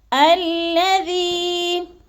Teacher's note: یا مدہ کو ایک الف دو حرکات کے برابر ہم نے لمبا کر کے پڑھنا ہے